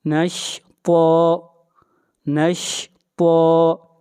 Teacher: طا حروف مستعلیہ میں سے ہے، طا کو موٹا پڑھا جائے گا اور طا کو کھینچ کر پڑھیں گے ایک الف کے برابر۔